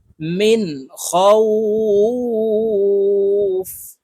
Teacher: মিন খ ওয়াও জবর খাও ফা দুই জের ফিন খাও ফিন, লিনের হরফের বামের হরফে ওয়াকফ হইলে এক আলিফ টানিয়া পড়িতে হয়। খাউফ এখানে খাউ এক আলিফ টেনে ফাকে সাকিন করে ফেলবো